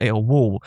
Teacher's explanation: an L is becoming like a W sound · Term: dark L